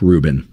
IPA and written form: ˈruːbɪn (Rubin)